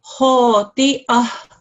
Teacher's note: Okay, and as the teacher did say on Friday, this is a ta marbuta, which gets changed into a ha when it's a sakin